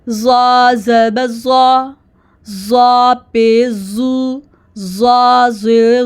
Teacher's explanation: زا میں زبان کی نوکوں کو 2 دانتوں کے درمیان لگائیں گے، باہر نہیں نکالنا